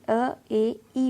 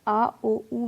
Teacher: अ, ए, ई में अपनी जीभ आगे की साइड आती है, तो ये अग्र स्वर है। आ, ओ, ऊ में जीभ पीछे की साइड जाती है, तो ये पश्च स्वर हैं।